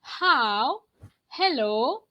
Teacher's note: ha is a glottal sound. It gives you breath, as if you are breathing.